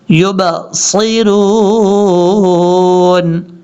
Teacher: یہ با حروف قلقلہ میں ہونے کی وجہ سے یہاں باؤنس آئے گا، قلقلہ آئے گا. یعنی اگر آپ یبصرون پڑھیں گے تو غلط طریقہ ہے.